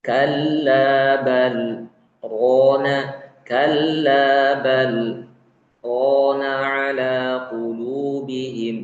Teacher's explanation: samarkan sifat takrir pada huruf ra ketika bertasydid